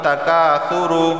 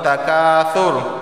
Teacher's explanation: کاف علی زبر کا اسے ایک الف کے برابر کھینچ کر پڑھنا ہوتا ہے۔